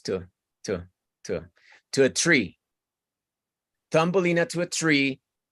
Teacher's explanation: todo esto, to a, and, on a, tienden a volverse pequeñitos